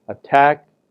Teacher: you may have a low to high tone